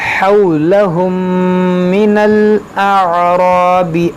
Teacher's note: دیکھیں یہاں میم ساکن کے بعد دوسری میم ہے، تو یہاں پر ادغام شفوی کریں گے، یعنی یہاں پر غنہ کریں گے